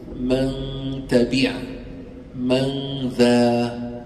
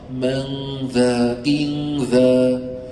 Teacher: الذال مرقق الغنه تتاثر به فصارت رقيقه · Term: الغنه مرققه